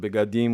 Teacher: So you can say it beadim with the e being partially pronounced.